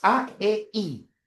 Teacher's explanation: en el caso de la E, I, la lengua se adelanta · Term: vocales llamadas anteriores